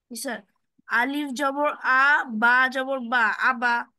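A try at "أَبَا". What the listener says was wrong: আলিফ হয় না, ওটা হামজা হয়ে যায়। আলিফের উপরে নিচেই জবর পেশ যাই আসুক হামজা হয়ে যায়, ঠিক আছে?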